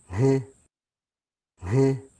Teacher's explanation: Then if we go to a nasal now, a voiceless nasal, this will demonstrate how breathy it is. You can see that there's still voicing going through at the same time as we're getting this high frequency noise as well.